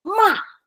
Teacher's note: so it's going down, and it's going down very suddenly. Ma. It's so suddenly that my voice breaks, according to this map. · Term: fourth tone